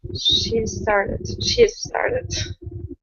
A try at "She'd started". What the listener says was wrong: So your tongue has to be pressed against the top of your mouth, and then you say with your vocal cords. She'd started. Yeah, because when you had said that before, the D had disappeared. You didn't say she'd. You had said she started. It's a rather complicated sound as well.